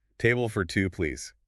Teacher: Listen to the stress on the words table and two.